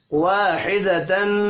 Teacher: حدتن تنوین کے بعد فا آ رہا ہے، اخفاء حقیقی ہوگا